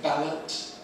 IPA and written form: ˈbælət (ballot)